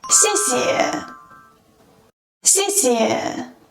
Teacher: the first 谢 is pronounced with the fourth falling tone, while the second 谢 is softer and shorter due to its neutral tone